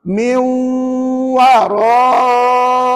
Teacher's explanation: Miu tu kena bunyi sengau. 2 second, 2 harakat.